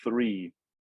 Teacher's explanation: tongue at the bottom and they created a scene sound is created with the edge of the tongue and the top teeth the edge of the top teeth